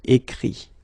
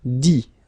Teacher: Remember that phonetically this final T doesn't exist, okay? So the sound will be only this I